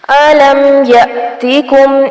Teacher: یا پر جھٹکا دیں گے کیونکہ حمزہ ساکن ہے